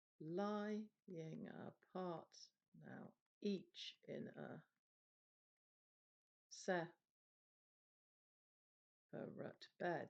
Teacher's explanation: in poetry, this stress pattern actually it kind of starts with a stress and then has the two unstressed syllables